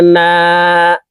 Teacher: আলিফ মদের হরফ ডানদিকের হরকতকে এক আলিফটা নিয়া পড়িতে হয় তো এই নুন খালি আলিফের সাথে এক আলিফ টানে পড়বো